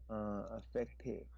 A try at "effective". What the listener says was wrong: Effective. You have to enunciate the word E because if that sounds effective, it's a different meaning.